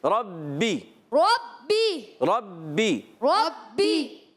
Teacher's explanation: ربی میں را پر زبر ہے، را کو پر کریں گے، موٹا کریں گے. اور ربی با مشدد ذرا رک کر ادا کریں گے.